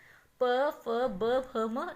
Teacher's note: ओष्ठ कहते हैं हमारे जब 2 लिप्स आपस में जुड़ते हैं तब उसे कहते हैं ओष्ठीय।